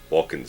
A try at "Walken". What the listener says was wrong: You pronounce the L? You go for a walk when outside? I've never pronounced the L in his name.